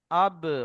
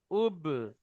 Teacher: আব মানে হালকা টপ করে আওয়াজটা মুখ থেকে বেরিয়ে আসতে চাচ্ছে